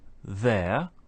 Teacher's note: we can say there by itself without an R sound